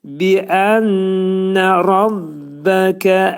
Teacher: Demək, bini incə şəkildə deyirik, ənnədə nunu salırıq. Bu burunda gunnə eləyirik.